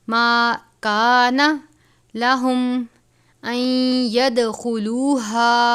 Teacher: نون ساکن کے بعد یا مشدد ہے حروف یرملون میں سے یا، نون کو یا سے ملا دیں گے